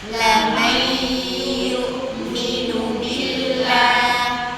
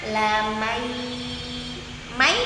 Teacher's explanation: Tapi kalau kita idgham dengan gunah suaranya kalau kita tutup hidung hilang. Lam hilang.